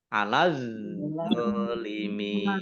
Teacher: alif lam syamsiyah karena tidak dibaca langsung masuk ke huruf berikutnya yaitu dha